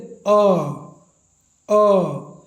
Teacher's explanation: जीभ का जो बिचला भाग है वो हल्का ऊपर उठने का काम कर रहा है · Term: मध्य स्वर